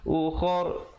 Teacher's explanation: Kalau kita pilih untuk waqaf di situ, ra-nya menjadi tebal.